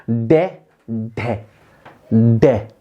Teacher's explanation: हमारी जीभ आगे से उल्टी होकर ऊपर किसको टच करती है, ऊपर मूर्धन्य को टच करती है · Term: उत्क्षिप्त व्यंजन